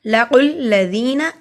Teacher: لَقُ الَّذِينَ قاف دونوں والا موٹا پڑھا جاتا ہے. قاف کو لام سے ملائیں گے. دیکھیے لام پہ شد ہے.